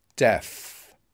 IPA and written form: def (deaf)